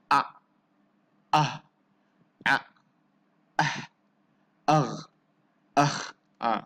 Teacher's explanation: Semua tu hurufnya keluar daripada kerongkong kita, halkum kita, kan? Itulah kita namakan dia sebagai izhar halki.